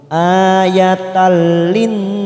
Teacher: [Tertawa] di sini bertemu dengan huruf lam warna orange di sini namanya bacaan Idgham bilagunnah hanya masuk tanpa ditekan lama-lama tanpa mendengung